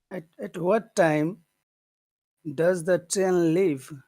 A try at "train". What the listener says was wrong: Tren or train? Train. Train. You have to put that E in there. Train.